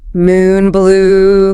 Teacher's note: Tongue is high and pulled back in the mouth.